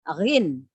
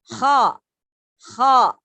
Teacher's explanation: Keluar dari pangkal lidah, tenggorokan bagian atas.